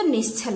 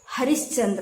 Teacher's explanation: विसर्ग के बाद यदि च या छ आए तो वह आपका तालव्य स में बदल जाता है। जैसे निह प्लस छल है तो निश्छल हो जाता है, हरिह प्लस चंद्र है तो हरिश्चंद्र हो जाता है।